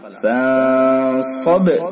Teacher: صاد کو پر کر کے پڑھیں گے اور با کے اندر قلقلہ کریں گے. قلقلہ.